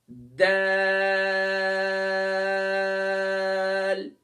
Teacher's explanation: दाल को अदा करते वक्त हम इसे लाइट करके अदा करेंगे और इसे 5 अलिफ की मिकदार खींचेंगे तो फिर जाकर इसका मखरज दुरुस्त होगा।